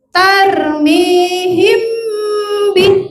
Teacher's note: mim mati ketemu ba jangan dibaca jelas dia harus dibaca samar dan dengung